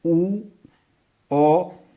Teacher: ਜੀਭ ਦੇ ਪਿਛਲੇ ਹਿੱਸੇ ਤੋਂ ਉਚਾਰੀਆਂ ਜਾਂਦੀਆਂ ਨੇ